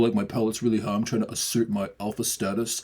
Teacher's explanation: Or if someone's like trying to be super alpha, you'll hear it in concert with a pretty forced down low larynx as well. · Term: a high pallet